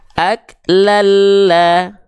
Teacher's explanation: Jadi bunyiannya dimasukkan ke lamnya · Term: idgam bila gunah